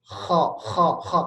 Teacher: Kalau kho, pangkal lidahnya itu naik dan dibuat gang kecil. Sehingga udara itu berasa pengen berdesakan keluar.